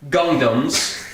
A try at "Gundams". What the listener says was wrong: Gundams, not Gungdams.